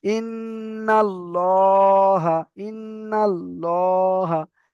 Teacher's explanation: লামকে পুর অর্থাৎ ল পড়তে হয়, পুর অর্থাৎ ল, মুখ গোল করে পড়তে হবে, ল পড়তে হয়।